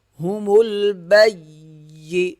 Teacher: با یا زبر بی، یا زیر یہ، ہومل بی، سختی سے ادا ہوگا یا، کیونکہ اس کے اوپر تشدید ہے